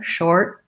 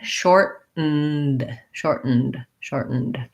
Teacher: I go up to make that T, but I don't release the air. Short. And then I go right into my N. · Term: stop T